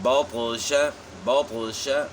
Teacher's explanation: اس طرح یہاں طا کے اوپر جو ہے سکون ہے تو ہم نے پڑھنا ہے بطش بطش، یعنی طا موٹی ہوگی اور اس میں قلقلہ بھی ہے